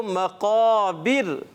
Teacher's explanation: قاف حرف مستعلیہ میں سے, موٹے حروف میں سے, تو ہم نے کیا کرنا ہے؟ اس کو موٹا پڑھنا ہے · حرف مستعلیہ کے بعد والا الف جو ہے وہ موٹا ہو جائے گا